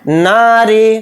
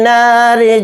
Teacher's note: را کے نیچے زیر ہے، را کو باریک پڑھیں گے